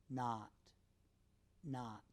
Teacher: ah is said with a wide-open mouth not not and uh is made with a medium open mouth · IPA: /a/